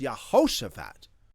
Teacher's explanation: Because the stress moves to the end, the vowels at the beginning of the word get rushed. They get shortened. So even though the divine name has an ah sound in it, like Yah, when you attach it to the front of a long name like Yahushua, the Yah reduces to a Ye, Y-E.